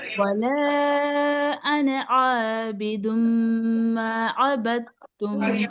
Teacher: अना लफ्ज जब भी कुरान पाक में आएगा उसे खींचा नहीं जाएगा